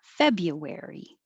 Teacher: it's more common to make that you a ya and make it shorter.